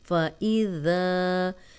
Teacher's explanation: ذال کو نرم بھی پڑھیں گے، سیٹی کی آواز نہیں آئے گی